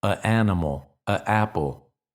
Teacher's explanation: There are some English speakers who don't use the N at all